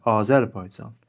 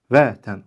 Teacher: Azərbaycan sözündə vurğu ə saytının üzərində